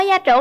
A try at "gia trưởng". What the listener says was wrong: Gia trưởng chứ không phải gia tưởng.